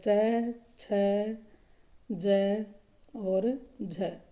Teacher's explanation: स्पर्श संघर्षी में जो हमारा च वर्ग है च छ ज और झ यह स्पर्श संघर्षी व्यंजन कहलाते हैं